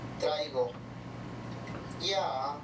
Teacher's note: Este es un tono cóncavo y eso se trata de representar con estas barritas, ¿no? Partimos de un tono alto que baja y después llega a media altura